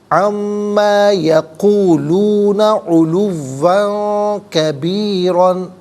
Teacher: پڑھیں گے علواً، دوسرا یہ کہ 2 زبر کی تنوین ہے، تنوین کے بعد کبیراً میں کاف آ رہا ہے تو یہاں تنوین پر اخفا کیا جائے گا، اخفا کہتے ہیں ناک میں آواز لے جا کر گنگنانا